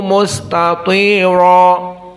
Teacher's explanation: ra di sini dalam keadaan mufakhamah.